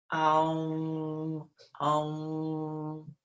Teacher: The Om sound, O-M is how we say it, but it's spelled A-U-M. It starts at the back of the throat as if you're saying, ah, but then you roll it over the top of the palate to the behind the teeth, and with the mouth closed to get the M sound. Om, Om. So it becomes tighter and tighter.